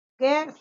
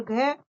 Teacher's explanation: ग सघोष अल्पप्राण और घ सघोष महाप्राण